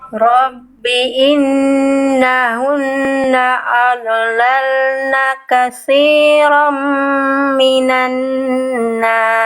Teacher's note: Nun tasdid gunah tuh ya. Dengung tahan dua harakat. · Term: nun tasydid gunnah